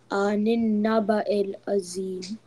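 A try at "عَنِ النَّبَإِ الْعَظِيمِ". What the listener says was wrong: It's not zim. It's dha is a heavy letter. Remember, tip of the tongue touching backside of the upper tooth. Zim. Say zim. Make your lips rounder and saying zim. Anin naba il azim. Anin naba il azim.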